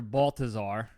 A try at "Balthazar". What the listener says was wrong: Balthazar, not Balthazar. Balthazar. It was with a hard T.